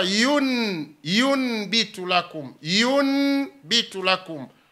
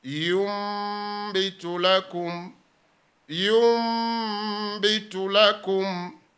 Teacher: Wa min kalimatin, na katika neno moja yun, hapa imeandikwa yun bitu lakum, yun bitu lakum, lakini ile nuni sakne inageuzwa kuwa mim yenye sakne, fasara inakuwa yumbitu lakum, yumbitu lakum. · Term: iqlab